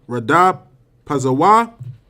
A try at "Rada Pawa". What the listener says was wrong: Well, now you putting a Z in there. It's Pawa.